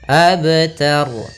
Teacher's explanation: ro tafhim yaitu ro yang dimatikan yang sebelumnya fathah